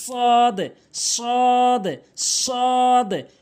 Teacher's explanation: জিহ্বার আগা উপর নিচে দুইটি দাঁতের আগাতে মিলিত করে উচ্চারণ করতে হবে। সদ সদ এভাবে সঠিক উচ্চারণ হচ্ছে সদ।